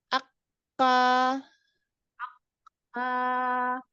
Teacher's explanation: makhrotnya ada di Pangkal lidah yang bertemu dengan langit-langit yang keras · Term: Kaf